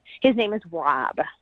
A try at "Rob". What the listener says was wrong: Oh, you sound like Yeah, it sounded like that. Wob.